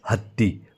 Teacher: जाते त्यालाच काय म्हणतो आपण महाप्राण म्हणतो जसं की हत्ती बघा ह जेव्हा आपण उच्चारतो तेव्हा आपण काय करतो फुफुसातली हवा एकदम जोराने बाहेर फेकतो